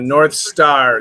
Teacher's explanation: the th is canceled